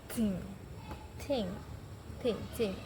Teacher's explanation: tidak membuat pita suara bergetar dan termasuk dalam dental di mana gigi atas dan gigi bawah saling bertemu dan masih termasuk dalam prikatif.